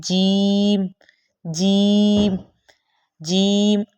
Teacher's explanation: جب ہم جیم کو شروع کرنے والے ہوتے ہیں، آپ کی جو زبان کا بیچ والا حصہ ہے یہ اوپر کے تالو کے ساتھ پہلے لگ جاتا ہے۔ آپ ٹرائی کر کے دیکھیں، جیم، یعنی زبان جو ہے پہلے اوپر کے تالو کے ساتھ لگتی ہے، پھر جیم ادا ہوتا ہے۔